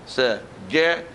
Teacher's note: Je, tengah lidah dengan tengah langit-langit.